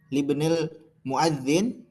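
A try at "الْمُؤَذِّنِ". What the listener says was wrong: Ini jangan disukun, muadzinu atau muadzini. Ini ada alif lam. Kalau ada alif lam nggak boleh tanwin. Kalau muadzinu ini kan mudhof ilaih.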